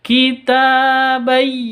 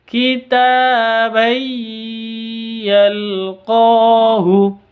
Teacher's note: tanwin bertemu dengan Ya cara bacanya masuk ke ya disertai dengung dua ketuk